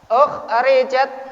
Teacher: Alasannya karena kha termasuk huruf halki, huruf yang keluar dari tenggorokan